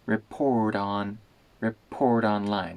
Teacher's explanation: that t in report turns into a tap